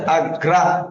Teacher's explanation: রফলা যার সাথে যুক্ত হয় সেই বর্ণটা দুইবার হয়